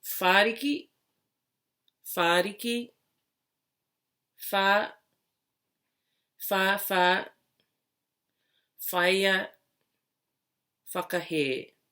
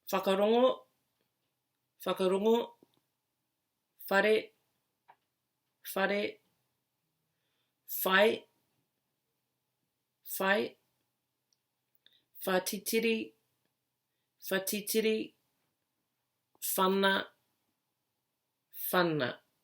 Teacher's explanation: most contemporary Māori speakers pronounce it as an F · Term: WH sound